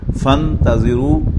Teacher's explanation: کیونکہ پہلے حمزہ وصل تھا لہذا فا سیدھی نون سے جا کر مل گئی اور حمزہ لکھا رہ گیا